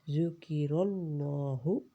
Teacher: ذکر اللہ، یہ لام ہے نا بیچ والا، اس کو بہت ہی ہیوی پڑھیں گے، دونوں بھی لام موٹے پڑھے جاتے ہیں۔ ذکر اللہ، جلدی ادا کریں گے۔